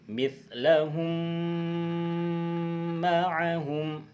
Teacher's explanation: Cara membacanya adalah idgham mithlain adalah dengan cara menyuarakan suara mim rangkap double atau ditasydidkan dengan samar-samar dengan panjang 2 harokat